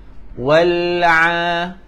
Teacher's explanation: huruf ain dia tengah-tengah kerongkong